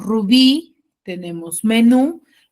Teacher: ejercicio está erróneo por ejemplo tenemos Rubí tenemos menú los cuales tien la mayor fuerza de voz en la última sílaba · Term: aguda